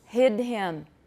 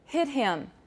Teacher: the voiceless has a higher pitch so you'll find that voicing will drive the pitch down and